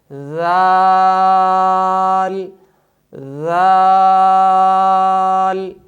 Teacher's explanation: صفت استفعال اور انفتاح کی وجہ سے اس حرف کو خوب باریک ادا کریں گے